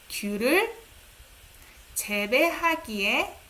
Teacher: we tend to raise intonation on the last syllable.